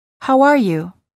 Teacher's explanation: insert a short W sound after the word how and Link the words together